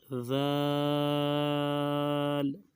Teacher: تھوڑی سی توتلی آواز نکال کے اس کو پڑھا جائے گا